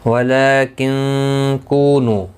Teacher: ولیکن کونو، کو واو مدہ ہے، نو واو مدہ ہے، دونوں کو ایک ایک الف کی مقدار کے برابر کھینچ کر پڑھیں گے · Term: کھڑی زبر